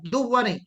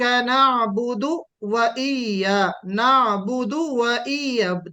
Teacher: دو اور وا الگ الگ ہونا چاہیے. ادغام نہیں ہونا چاہیے. مرج نہیں ہونا چاہیے دونوں.